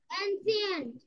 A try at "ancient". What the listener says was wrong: অ্যানশিয়েন্ট। C না, এটার উচ্চারণ শ হবে। অ্যানশিয়েন্ট।